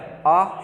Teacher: जिनका हम पूरा मुख खोल करके उच्चारण करते हैं वो होता है आ, ये होगा विवृत स्वर।